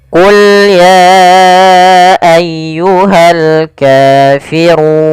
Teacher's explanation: ro tebal yaitu r tafkhim. Rnya dibaca dengan tebal. Kemudian pada lafal run itu ada bacaan mad arid lukun.